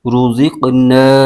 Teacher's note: یہ قوف حروف مستعلیہ میں سے ہے، اس کو پر یعنی موٹا کر کے پڑھیں گے ، اور یہ حروف قلقلہ میں سے بھی ہے، تو یہاں